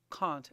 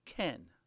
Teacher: when you say can't you make a nasal sound and you should feel a vibration in your nose